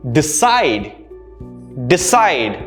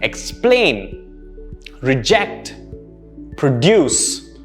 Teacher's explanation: the stress is on the second syllable again explain reject produce all these words had stress on the second syllable